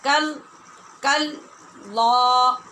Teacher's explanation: ہم کاف باریک اور لام پر